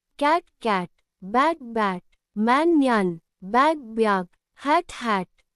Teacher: This A is very short and open. Keep your mouth wide and say ah. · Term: short A sound